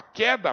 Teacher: Então quando você fala queda presta atenção você não pronuncia o u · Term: dígrafo